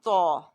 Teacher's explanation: تو یعنی کہ توئے جو ہے اس کو ہم ہر صورت میں موٹا پڑھتے ہیں. اور ایک اور کوالٹی جو اس میں فرق کرتی ہے وہ قلقلے کی ہے.